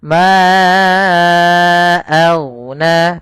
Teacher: Maka kita namakan dengan mad jaiz munfasil. Maka huruf mannya kita panjangkan dulu empat harakat atau lima harakat